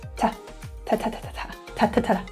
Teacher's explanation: you will hear the word T-O pronounced as ta rather than to.